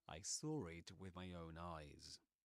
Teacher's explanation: this ra, that appears in between saw and it, is called an intrusive ra.